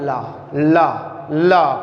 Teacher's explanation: और जो ला है, आप बोलिएगा ला, ला, ला, कई बार बोलिएगा। देखो जीभ क्या होती है, दांत और मसूलों के पास में टिक होती है, यानी कि छूती है